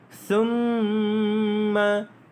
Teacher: dipanggil sebagai wajibul ghunnah, dibaca dengan panjang dengung 2 harakat. Summa, bukan sum, bukan huruf sin, itu ada huruf sa.